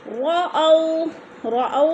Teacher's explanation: رَأَوْا، رَأَوْا میں بولین ہے، واو ساکن سے پہلے حمزہ کے اوپر پہ زبر ہے تو بولین کو ہم نے لمبا بھی نہیں کرنا اور جھٹکا بھی نہیں دینا